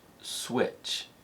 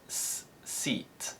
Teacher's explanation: for example when a consonant sound appears before the what sound it's often labialized which means the sound is modified slightly by our rounded lips